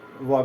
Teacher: व इसमें दांत से भी और ओठ दोनों मिलने से, दांत और ओठ दोनों में मिलने से व का उच्चारण होता है, इसलिए इसे दंतोष्ठ बोलते हैं